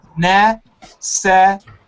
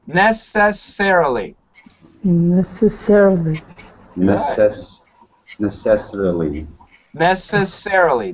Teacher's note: Usually we accent the ser.